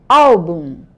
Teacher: A sílaba mais forte não é o bum, é o al. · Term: paroxítonas